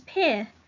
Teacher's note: maybe they're not saying the G in pig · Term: final consonant deletion